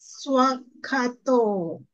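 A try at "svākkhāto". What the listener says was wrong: Swakato. Yes, long A, don't forget.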